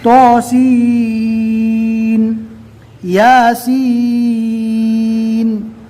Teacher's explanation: یہاں پر سین کو بالکل ظاہر کر کے پڑھنا ہے، اس لیے کہ سین کے بعد کوئی تشدید والا حرف نہیں ہے